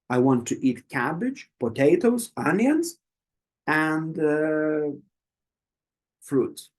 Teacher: if you have more than four options or five or whatever all of the first options The Voice will go up up up and up and for the final one it goes down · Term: list technique